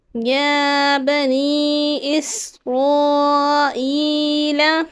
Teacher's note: یا پہ کھڑے حرکات ہیں. ایک الف کی مقدار کھینچ کر پڑھنا ہے یعنی 2 حرکات